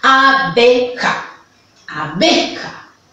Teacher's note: ¿Viste cómo la mayor fuerza de voz está en la B?